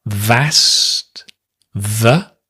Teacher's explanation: Notice we often drop the K, right, as well, in asked